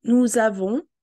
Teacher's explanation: we would link the S into a